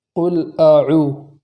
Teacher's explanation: آگے ہے اعوذ، تو اس میں حمزہ ہے شروع میں، اس حمزہ کے اندر جھٹکا لگائیں گے تاکہ حمزہ کی ذات کا اچھے سے خیال واقع ہو۔ جیسے قل اعوذ، اگر ہم جھٹکا نہیں کریں گے تو حمزہ کی ذات پہچاننے میں نہیں آئے گی۔